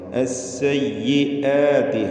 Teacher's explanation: ചിലർ സയ്യാത്തി എന്ന് ഹംസ കേൾപ്പിക്കാണ്ട് അങ്ങനെ അവ്യക്തമാക്കി പറയും, അതൊക്കെ തെറ്റാണ്.